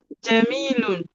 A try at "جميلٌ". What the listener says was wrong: Yes. Jamilun. I need to hear that lun sound. It's not must be sound.